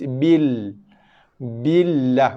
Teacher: Yang kedua, lam pun kita abaikan ataupun kita skip bacaan pada lam yang pertama kerana tiada baris, kita terus ke lam yang kedua. Cuma lam yang kedua ni dibaca dengan tarqiq ataupun nipis kerana sebelumnya ada huruf yang berbaris bawah. So kita akan baca dengan lam nipis bil.